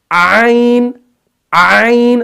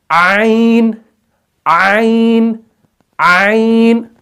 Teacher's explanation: بس ایک چیز ذہن میں رکھو، عین کے وقت کیا ہوگا کہ عین کے وقت سٹارٹنگ میں آواز جو ہے وہ تھوڑی سی سکویز ہوگی، تھوڑا سا اس کے اندر نچوڑ پیدا ہوگا، تو پھر وہ عین جو ہے ادا ہو جائے گا۔